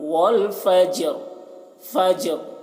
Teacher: والفجر والفجر، فجر جیم میں قلقلہ کریں گے، فجر یہاں پر وقف کریں گے تو را کی جو زیر ہے وہ جزم سے بدل جائے گی، تو فجر جو وقف کرتے ہیں تو را کی آواز ظاہر ہوتی ہے